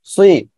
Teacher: দুই ঠোঁটটা হালকা গোল হবে, ঠিক আছে, আর মোটা আওয়াজ হবে সুই, সি এমন যেন না হয়। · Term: সজের সুই